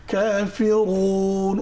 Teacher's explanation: এখানে হামস আছে বা একটু বাতাস চালু রাখতে হবে। কেমন? কাফিরুন, র আবার মোটা করে পড়তে হবে।